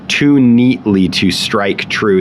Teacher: too and neat are both stressed syllables, so we have kind of a spondaic structure · That's a spondy, a Pyrrhic foot, and then a spondy.